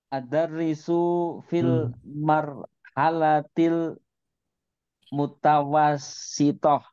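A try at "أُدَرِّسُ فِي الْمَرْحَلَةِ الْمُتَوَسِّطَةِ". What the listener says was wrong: Naam, ahsan. Tapi bukan adar risu ya. Udar risu.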